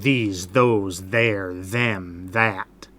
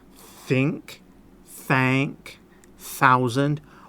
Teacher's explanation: Both of them, you're just blowing air through your teeth, basically, with your tongue stuck out. The only difference is, with the harder sound, you're using your voice to make the sound. The soft TH sound, it's just air. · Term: hard th